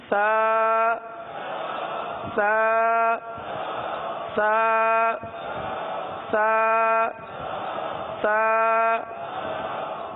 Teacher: زبان کا سرا اٹھا کر اوپر کے دانتوں کے اندرونی کنارے پر لگائیں گے، اور پھر آواز سیٹی کی نہیں آئے گی بلکہ سانس کی آواز جاری ہوگی، اس طرح سا سا سا سا سا۔